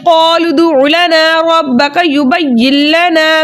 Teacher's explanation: नून साकिन को लाम से मिलाकर इस तरह पढ़ेंगे दोनों एक साथ मुशद्दद अदा हो लेकिन गुन्ने के बगैर। यहाँ फिर दोबारा अलिफ मद्दा हो रहा है, ठीक है, क्योंकि अलिफ खाली से पहले ज़बर है, इसलिए ये ऐसा अलिफ अलिफ मद्दा कहलाता है और इसे दो हरकत की मिकदार खींचकर पढ़ते हैं। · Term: इदगाम बिला गुना